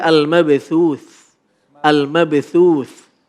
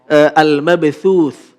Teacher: Huruf tha ini punya sifat hamas. Hamas itu apa namanya? Cara membacanya adalah ketika waqaf keluar nafas sedikit.